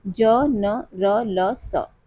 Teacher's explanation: वत्सर्य व्यंजन जी्हा के अग्र भाग या नोक के द्वारा दांतों एवं मसूड़ों के पास उभरे खुरदरे भाग से उच्चारित होने वाले व्यंजन